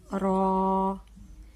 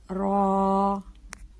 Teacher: را ایک الف جتنا لمبا کر کے پڑھیں گے